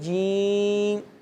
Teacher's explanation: یہ زبان کے درمیان اور تالو کے درمیان سے ادا ہوتے ہیں. تو زبان کو تالو پہ لگائیں گے جیم، یہ ادا ہوگا نا.